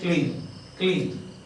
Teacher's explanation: And so the voiced L is by nature voiced. But then K is voiceless and therefore it influences the voice quality of L, so it becomes voiceless